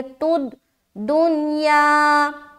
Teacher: تا کو دال سے ملائیں گے، تد دنیا۔ آگے دنیا میں کیا کیا ہم لوگوں نے؟